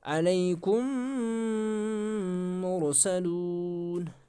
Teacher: मीम को मीम के साथ मिला भी सकते हैं